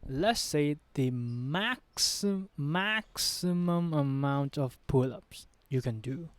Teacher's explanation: you just need to elevate your volume for the word max only. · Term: stress sound